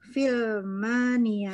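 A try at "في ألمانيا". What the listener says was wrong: Fi Almania. Fi Almania. Di sini karena di sini bukan hamzah wasol, tapi hamzah kotok. Ya, dia terbaca. Ada kepala hamzah, ya, ada kepala hamzah di situ, maka hamzahnya terbaca. Nah, Almania.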